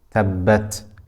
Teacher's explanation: Ta has the sifat of hams and shidda. So we will continue the breath slightly, but the sound will not continue.